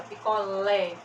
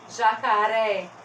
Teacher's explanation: sílaba tônica é a última quando nós temos aqui ó picolé a última sílaba mais forte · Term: oxítona